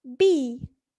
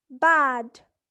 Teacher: when pronouncing the vowel e the tongue remains high in contrast when pronouncing the vowel ah the tongue remains low